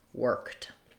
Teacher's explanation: when I have a voiceless sound like a K, work and worked, the letters ED say a T sound.